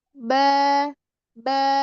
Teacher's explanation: Huruf ba itu nggak pakai nafas yang keluar.